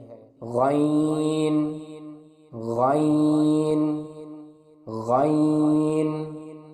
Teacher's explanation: غین کے مخرج کی ادائیگی حلق کے اوپر والے حصے سے ہوتی ہے